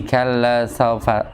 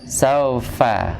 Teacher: Bibir bawah bertemu dengan dua gigi seri atas fa. Kalau baca gini, kalla saufata.